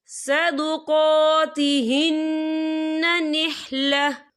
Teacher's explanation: और आगे देखिए, निहला, यहाँ पे आपको छोटी सी तोई लिखी नजर आ रही है, तो ये फिर मतलब की अलामत है, तो यहाँ पे ठहरना बेहतर है। वफ की सूरत में 1 ज़बर पढ़ा जाएगा, 2 ज़बर नहीं पढ़े जाएंगे।